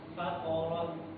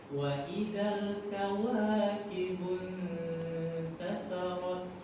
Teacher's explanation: Suaranya itu tebal. Faqarat. Terus kalau tipis dia terdengar a.